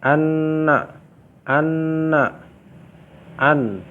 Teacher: Maka teman-teman akan rasakan bahwasanya nun itu keluar dari lidah menempel pada bagian gusi atas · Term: huruf nun